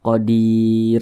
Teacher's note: huruf ro dibaca tipis karena di belakangnya ada huruf ya sukun dan kita berwaqaf di huruf ro. Jadi kalau kita berwaqaf pada huruf ro dibaca tipis, dibaca tarkik karena di belakangnya ada huruf ya sukun. · Nah, jangan dibaca qadirun tapi qadir. Nah, ketika kita berwaqaf di huruf yang tidak dibaca panjang, maka huruf tersebut harus kita sukunkan, maka dibaca qadir. Kemudian huruf ro dibaca tipis karena di belakangnya ada huruf ya sukun dan kita berwaqaf di huruf ro.